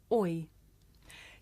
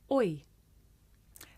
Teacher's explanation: This is a diphthong, a double vowel sound. The shape the mouth makes changes from the beginning of the word to the end. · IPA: /ɔɪ/